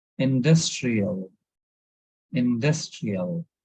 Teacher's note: So there is a stress on DUS